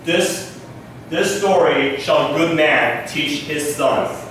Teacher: there is a wave going on. A weak followed by strong, and so on. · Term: iambic pentameter